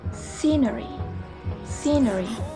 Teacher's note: konsonan ini tergolong dalam alveolar, frikatif, dan voiceless sound. Contohnya dalam kata yaitu scenery.